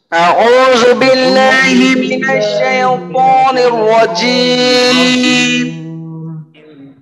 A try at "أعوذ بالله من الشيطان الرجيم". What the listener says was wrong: আরেকটু ধীরে ধীরে তেলাওয়াতের চেষ্টা করবেন, তেলাওয়াতের গতিটা আরেকটু কম।